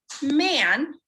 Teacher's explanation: the pronunciation of the a phoneme in words like man where the a is followed by an n and that sound travels up the nose and it becomes nasalized